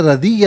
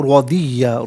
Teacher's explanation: اچھا ردیہ نہیں رودیہ، را پر زبر ہے تو را کو پر کر کے پڑھا جائے گا